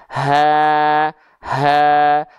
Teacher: dari pita suara yang membuka Makanya keluar nafas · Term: ha besar